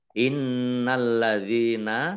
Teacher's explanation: nun tasdid dibaca mendengung, gunah ditahan 2 harokat